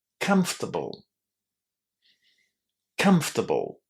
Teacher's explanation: you need to start this with a very very tiny vowel sound and then try to imagine that there is nothing between B and L. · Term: unstressed ending